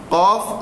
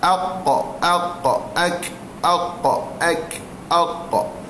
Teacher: Qaf memang betul-betul duk pangkal lidah. Kalau kaf ni dia duk pangkal lidah juga tapi atas sikit daripada qaf.